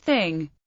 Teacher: voiceless dental non-sibilant fricative, as in English thing